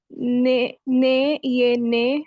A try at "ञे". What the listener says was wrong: This is not noon. This is not noon. This is something different than noon. ञे इसमें जुबान touch नहीं करती, ऊपर भी टच नहीं करती, नीचे वाले तालु को भी टच नहीं करती, दरमियान में लहराती है। करीब तरीन है इसको, करीब तरीन है, इसको एक्यूरेट करने की कोशिश कीजिए।